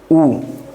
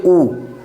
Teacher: जब उ बोलेंगे तो हमारा जो होठ है दोनों एकदम गोलाकार बन जा रहा है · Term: वृत्त मुखी स्वर